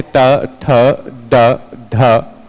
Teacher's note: इनका हम उच्चारण स्थान कहां से करते हैं, मूर्धा से करते हैं। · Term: मूर्धन्य